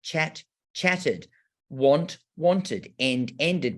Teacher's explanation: after a T or a D, a T or a D, like chat, chatted, want, wanted, and ended, we get that ud sound. And I love telling the children that this sound, like ud, has the schwa in it.